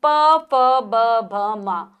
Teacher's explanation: तो जब भी हम इनका उच्चारण करते हैं हमारे दोनों होठ आपस में मिलते हैं। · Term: प वर्ग